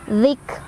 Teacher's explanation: Kafnya ada hamas, ada angin keluar. Rak. Ro-nya dibaca secara tafkhim lagi karena ada ro barisnya fathah.